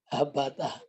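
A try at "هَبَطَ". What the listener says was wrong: Ini to Pak, bukan tak.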